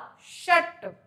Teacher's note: ठीक है, फिर हमने बोला षट, इस वाले श का उच्चारण स्थान निकालने के लिए हमेशा बोलकर देखिएगा षटकोण। जब हम बोलते हैं षट तो जीभ एकदम से आगे की तरफ ऊपर टच होती है, तो इसका हो जाता है मूर्धा।